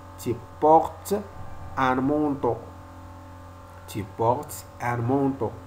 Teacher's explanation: Ici, on ne fait pas la liaison entre S et N.